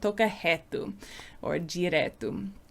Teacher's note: R's become an H sound rather than a strong R sound. You wouldn't say reto with an R.